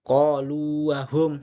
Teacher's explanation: wawu bertemu wawu, tidak boleh idgham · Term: mad tamkin